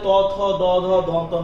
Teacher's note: ত, থ, দ, ধ, দন্ত ন, এগুলো হচ্ছে দন্তধ্বনি